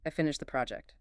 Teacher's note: If my tone falls at the end, I finished the project. It's just a statement of fact.